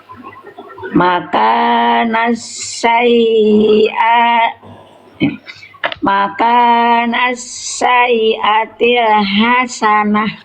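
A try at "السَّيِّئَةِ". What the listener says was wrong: Yanya ditasdidkan. Bunda tadi baca seolah tidak ada tasdid.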